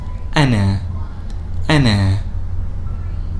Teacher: when hamza is on top of the alif it is by default pronounced as a a with a little bit of a glottal stop